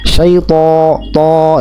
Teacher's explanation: membaca huruf to pada kata syaiton dengan memonyongkan bibir